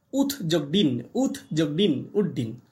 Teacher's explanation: দেখো খণ্ডেক্তটা তয়ে ডয়ে পরিণত হলো, ত ডয়ে পরিণত হলো। ত ছিল কি দন্তধ্বনি, আর ড মূর্ধন্য ধ্বনি, তাহলে তটা ডয়ে পরিণত হলো। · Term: মূর্ধন্য ভবন